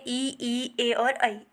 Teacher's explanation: इनके उच्चारण में हमारी क्या होती है जो होठों की स्थिति है वो वृताकार नहीं होती है